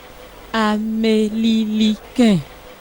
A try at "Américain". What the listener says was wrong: Non, non, non, non. Pas Amélie. C'est faux. Dites ri. Américain.